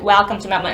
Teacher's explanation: they pronounce that E sound a bit lower before an L